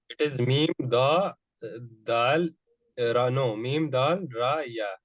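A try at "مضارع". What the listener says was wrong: With dal, there is an alif. Mudari.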